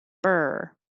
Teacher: your tongue stays curled in the r position like er when you just say like her er hold your